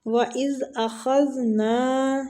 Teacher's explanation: زال دونوں جگہ پہ نرم پڑا جائے گا، سیٹی کی ساؤنڈ نہیں آنی چاہیے، خواہ مستعلیہ حروف ہے، اس کو پور پڑھنا ہے۔